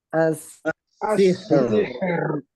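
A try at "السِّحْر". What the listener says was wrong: Nah, hati-hati jangan tebal. Ho. Jangan. Her. As-sihr. As-sihr. Haknya haknya dialirkan dulu. Asih asih. asihr. nah itu kalau di tengahnya ada rohawah, huruf yang sifatnya rohawah. Kalau ini kan kolkolah, jadi beda kalau kolkolah.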